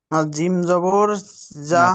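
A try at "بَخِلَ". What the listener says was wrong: না, না, এটা জিম নয়, প্রথমে বা আছে, ঠিক আছে, তারপরে খ। বাখিলা।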